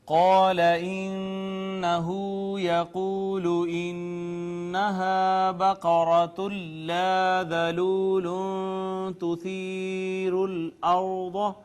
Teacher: قاف حروف مستعلیہ میں سے پر کر کے پڑھیں گے اسے ہم